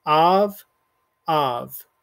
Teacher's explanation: Obviously, you don't hear any kind of Y sound, so the yud is completely silent.